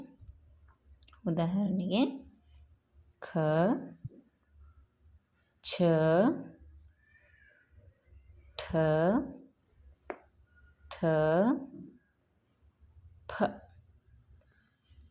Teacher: ಇನ್ನು ಎರಡನೇದಾಗಿ ಮಹಾಪ್ರಾಣಗಳು. ಮಹಾಪ್ರಾಣಗಳು ಹೆಸರೇ ಸೂಚಿಸುವಂತೆ ಹೆಚ್ಚು ಅಥವಾ ದೀರ್ಘ ಉಸಿರಿನಿಂದ ಉಚ್ಚರಿಸಲ್ಪಡುವ ಅಕ್ಷರಗಳಿಗೆ ಮಹಾಪ್ರಾಣಗಳು ಅಂಥೇಳಿ ಕರೀತಾರೆ.